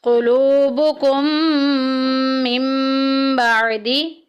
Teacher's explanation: क़ुलूबुकुम मिन बादी, क़ुलूबुकुम में देखें मीम साकिन के बाद मीम आ गया, पहली मीम को दूसरी मीम में मुदगम कर देंगे, इदगाम शफ़ी का कायदा जारी हो रहा है।